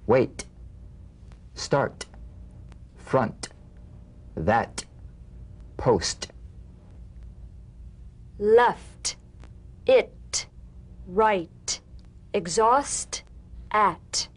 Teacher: the unvoiced t-tong front palatal stop consonant cognate to the D the same staccato springing action as the D drumbeat with no voice forms the light tap of the t feel a gentle pulsation in the tongue now tap the drumbeat